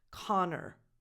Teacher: I'm not saying a double N, Connor. And the last vowel is a schwa, so it's not an O again, Connor. Just go from the N to the R, Connor.